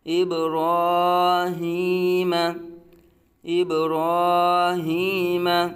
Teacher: را پر کھڑا زبر، را کو پر پڑھا جائے گا